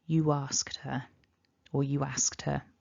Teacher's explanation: we've got the word you ending in this ooh and then we've got a vowel immediately afterwards we can have this tiny intrusive or linking w that pops up · there can be this subtle w that pops in just because of the mouth shape that we're making